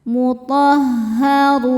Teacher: Ro dibaca tafkhim karena berharokat dhammah, dibacanya tebal.